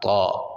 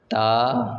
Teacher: آگے ہیں جی ہم آواز حروف، ان حروف کی آواز جو ہے وہ ملتی جلتی ہے، اس لیے ان کو جو ہے وہ فرق کرنا چاہیے، قاعدے والوں نے اس لیے دیا ہے یہاں پر تا، طا، تا، طا۔ دیکھیں مخرج دونوں کا ایک ہے، لیکن کیا ہے، موٹا اور باریک ہونا ہے، آواز ان میں تبدیل ہوگی